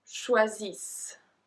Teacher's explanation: So you just end with a long S.